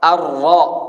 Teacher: Jadi cuman 1 kali aja getarannya. 1 atau 2 lah.